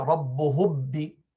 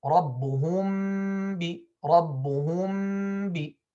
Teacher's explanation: closing the lips normally without any pressing and without any gap at all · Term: ikhfa shafawi